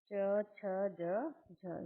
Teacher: व्यंजनों के उच्चारण में स्पर्श का समय अपेक्षाकृत अधिक होता है और उच्चारण के बाद वाला भाग संघर्षी हो जाता है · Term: स्पर्श संघर्षी